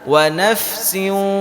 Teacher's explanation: idgham kita masukkan berarti bunyinya dimasukkan ke huruf wa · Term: Idgham Bighunnah